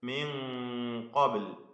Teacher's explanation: സാക്കിനായ നൂൻ ഇഖ്ഫാ ഹഖീഖി നൽകി അവ്യക്തമാക്കി മണിക്കണം. മണിക്കലിലും തഫ്ഖീം ഉണ്ടാവണം, കാരണം ഖാഫ് ഇസ്തിഅലാഇന്റെ തഫ്ഖീമിന്റെ ഹർഫാണ് എന്നതുകൊണ്ട്.